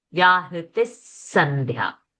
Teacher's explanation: Sandhya's Dha is a Mahaprana.